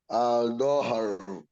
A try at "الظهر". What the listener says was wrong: You put your shadda. Al-dhahru. Al-dhahru. Don't drag no, not no. Al-dhahru.